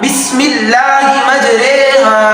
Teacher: را امالہ ہمیشہ باریک ہوگا۔ جی یہ بات بھی ہے کہ را کے باریک ہونے کی صورتوں میں سے ایک را ممالہ بھی ہے، اور یہ ہمیشہ باریک ہوگا بسم اللہ مجریہا۔